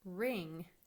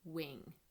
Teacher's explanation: is we need to adjust their lip rounding a little so instead of coming fully together as in a w we need them to keep their lips a little further apart okay they need to come a little more forward and they · most children are doing as their error is making it a W sound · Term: beginning our sound